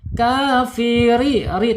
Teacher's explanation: Nah, ini tarkik ya bacaan tipis rnya tidak boleh tebal. Kafiri ri tapi getarannya tetap tidak boleh lebih dari dua atau tiga ya.